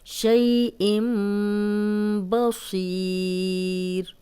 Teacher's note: آگے تنوین ہے، جب بھی 2 زبر 2 زیر 2 پیش کے بعد اگلا حرف با آ جائے تو تنوین جو ہے وہ میم میں بدل جاتی ہے۔